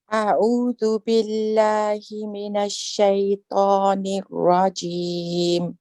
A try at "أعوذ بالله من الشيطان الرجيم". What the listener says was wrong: You're just breaking and say nirra. Remember we say ar-rajim, ar-ra, ar-ra. Don't stop the sound of your voice in the middle of the ras. And the other thing, Auntie, I want a little bit more of a squeeze for your ayn at the beginning.